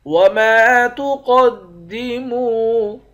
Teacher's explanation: وما تقدموا، میم کے بعد الف ہے، الف حرف مدہ ہے، ایک الف کے مقدار کھینچ کر پڑھیں گے۔ قاف کو موٹا پڑھیں گے، میم کو واو کے ساتھ ملا کر واو کو بھی ایک الف کے مقدار کھینچیں گے، واو حرف مدہ ہے۔